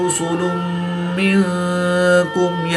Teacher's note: را پر پیش ہے تو را کو پر پڑھیں گے، 2 پیش کی تنوین کے بعد میم حروف ملون میں سے ہے تو یہاں پر ادغام مع الغنہ ہوگا، یعنی غنہ کر کے پڑھیں گے